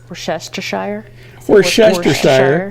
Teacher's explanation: So we drop the first R, and the vowel in that syllable is the as in push vowel.